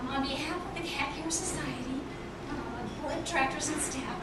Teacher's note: If you were here last year, you've heard this already, but I have a voice disorder, so my vocal cords don't close when they're supposed to, so I sound very breathy. Sometimes I squeak, which is entertaining.